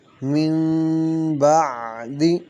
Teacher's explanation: یہاں پہ نون ساکن ہے، نون ساکن کے بعد حرف با آ رہا ہے، یہاں انقلاب اخفا مع الغنہ ہوگا۔ من بقلہا میں نون ساکن کے بعد حرف با آ رہا ہے، انقلاب ہوگا بقلہا، بق میں قاف میں قلقلہ ہوگا، ہا الف مدہ ہے۔